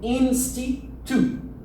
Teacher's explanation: Le U n'existe pas en langue anglaise. Ça va être un OU. Tu vois, et là, c'est un petit OU.